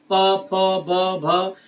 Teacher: इसमें आपके ओठ देखिए आपस में टच हो रहे हैं, मतलब ओष्ठ